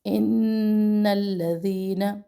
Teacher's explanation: ان الذین نون مشدد ہے، یہاں پر بھی ایک الف ٹھہرنا ہے، پھر آگے جانا ہے لام پر۔